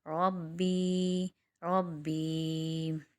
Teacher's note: رابا زبر ربا، یا زیر بی ربی ربی. یہاں پر ربی میں یا مدہ بن رہا ہے، وقف کی صورت میں ایک الف کی مقدار کھینچیں گے